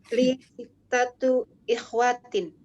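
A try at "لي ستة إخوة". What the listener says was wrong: Aywa, sittatu ikhwatin. Ya, sittatu ikhwatin. Nah, ahsanti, sahih.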